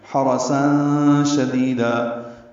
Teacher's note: تنوین کے بعد شین آنے کی وجہ سے ساں میں اخفا ہو رہا ہے